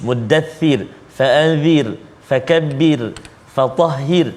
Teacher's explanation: ini semua huruf ra dia tarqiq, tipis.